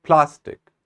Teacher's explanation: a plastic knife is it plastic or is it plastic see the focus is on the very first syllable